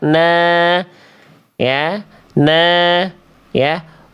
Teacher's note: Nunnya di atasnya fathah. Fathahnya tegak tapi berarti vokal a-nya dua harakat.